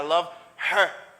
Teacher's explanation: H pas accentué. Mais on va parler rapide. H réduit.